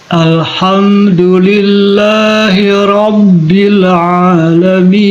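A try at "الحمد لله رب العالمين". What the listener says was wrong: Du-nya tadi Pak Haji, du-nya kurang lembut ya. Huruf dal makhrajnya di mana? Makhrajnya huruf dal Di mana maksudnya? Gigi seri. Apanya yang di atas? Iya. Ya.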